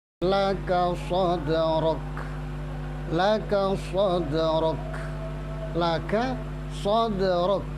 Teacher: Khusus kaf dan ta ini hamasnya baru muncul ketika suara itu dilepas.